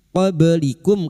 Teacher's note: ba sukun yang mati asli di tengah kalimat qalqalah sugra jangan lupa dipantulkan